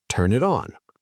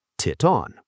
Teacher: The T from it moves to on. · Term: Consonant to vowel linking